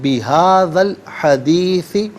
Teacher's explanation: بہذا الحدیثی، ہذا میں ذال پر زبر ہے، اس سے الحدیثی کی لام ساکن کے ساتھ ملائیں گے. درمیان میں سے الف یعنی حمزہ کو حذف کریں گے